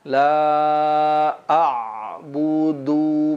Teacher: Pada huruf ain ada sifat bainiyah la a'budu. Jangan sampai memantul la tapi dia mengalir sedikit